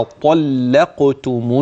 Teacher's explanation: ان ترقق هذه اللام وان ننتبه الى الطاء فلا ترقق فتصبح حرفا اخر اذا الطاء مفخمه اللام بعدها مرققه ثم القاف في مرتبتها في درجه التفخيم هذا اول امر كذلك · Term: اللام المفتوحه